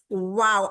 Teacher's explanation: इतना गोल करें कि दरमियान में सिर्फ सुराख रह जाए।